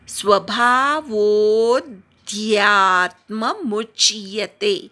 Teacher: स्वभावोध्यात्म वो वाढवायचा आहे, अवग्रहावर आघात घ्यायचा आहे.